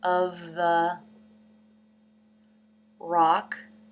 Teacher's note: you can see the tongue moving up in the back to make the k sound